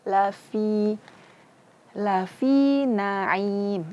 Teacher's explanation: Sifat daripada fa salah satunya adalah rakhawah, mengalirnya suara.